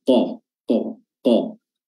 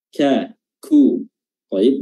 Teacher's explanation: sama di lisan namun Tempat bertemunya dengan ee langit-langit itu berbeda kalau qof itu di langit-langit lunak kalau Kev itu di langit-langit keras